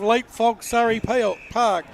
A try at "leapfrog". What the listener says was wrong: You said fog, not frog.